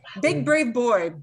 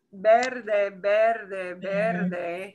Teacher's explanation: you should not feel that puff of air. When you pronounce the B in Spanish.